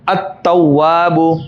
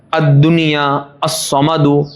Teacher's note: ادغام تام لام باقی نہ رہا